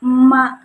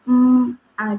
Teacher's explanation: dia itu ada getaran ketika mengucapkan kata malu sebelum memasuki emm vokal a gitu kayak ma jadi kayak ada dengungan gitu. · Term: kata bersuara